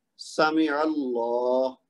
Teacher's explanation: عین کے اوپر زبر ہے تو لام موٹا پڑا جائے گا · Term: مفخم